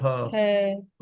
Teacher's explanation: ह कंठ से आवाज आ रही है।